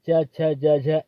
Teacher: च वर्ड का उच्चारण स्थान क्या होता है, तालु होता है दोस्तों